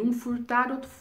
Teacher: o f ele é uma consoante fricativa a produzindo esse som pela passagem do ar entre o lábio inferior contra os dentes superiores e implica a sensação de algo que cuspido o som reiterado